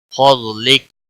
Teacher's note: ضاد حروف مستعلیہ میں سے ہے، موٹا پڑا جائے گا، باقی کسی بھی حرکت والے حرف کو کھینچنا نہیں، کاف کی صورت میں ساکن پڑا جائے گا۔